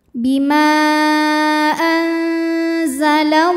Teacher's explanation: nunnya dibunyikan samar-samar siap-siap menuju Zai disertai bunyi dengungan dengung dan samarnya sama karena Zai ini makhrajnya tengah-tengah tidak terlalu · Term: ikhfa ausat